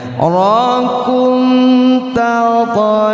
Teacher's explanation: Izhar artinya jelas, syafawi artinya bibir. Dibaca jelas di bibir. Rakum tidak ditahan pendengungannya. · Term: izhar syafawi